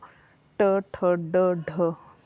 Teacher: मूर्धा जो ट, ठ, ड, ढ जीभ के बीच के स्थान से बोली जाती है, तो ये ट वर्ग जो है आपकी मूर्धन्य ध्वनि है